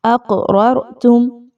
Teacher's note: اقررتم، قاف پر جزم کی علامت ہے اور قاف جو ہے وہ حروف قلقلہ میں سے ہے، تو اس لیے یہاں پر اس کو تھوڑا سا ہلا کر پڑھا جا رہا ہے قلقلہ کا اصول فالو کرتے ہوئے۔